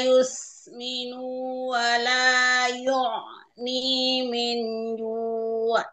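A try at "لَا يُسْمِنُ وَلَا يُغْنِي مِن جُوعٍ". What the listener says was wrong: Ini tadi dibaca panjang. Huruf ghainnya masih dibaca huruf ain tadi ya.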